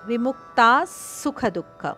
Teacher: ಮುಕ್ತಾದ ನಂತರ ಬರುವ ವಿಸರ್ಗದ ಉಚ್ಚಾರಣೆ ಸ ದಂತೆ